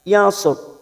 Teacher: namanya ra tafkhim atau ra yang dibaca tebal